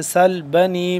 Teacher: سل سین سیٹی کے بعد سختی سے، سل بنی با زبر با، نون یا مد زیر نی، 2 سے 3 الف کے برابر یہ لمبا ہوگا۔